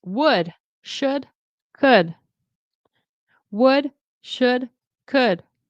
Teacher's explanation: No L is being pronounced here.